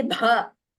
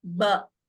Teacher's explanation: Bha is Mahaprana. So we use more of our breath prana when we say Bha compared to Ba